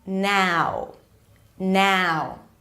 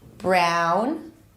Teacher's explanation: it's that as in cat sound in American English, and then you move to the oo sound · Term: ow as in now